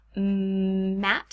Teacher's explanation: the column of air through the nasal cavity like in maps so my mouth is completely closed the sound is now coming out through my nose